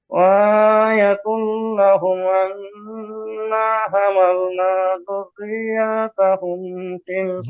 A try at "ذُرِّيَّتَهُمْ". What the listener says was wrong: ذريتهم، ذريات مد নেই, ذريتهم